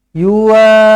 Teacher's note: Mad lazim kena baca 6 harakat. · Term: mad lazim kalimi mustaqqal